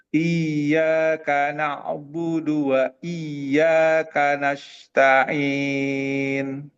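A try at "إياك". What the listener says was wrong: Kafnya dikasih udara coba. Ka. Ka.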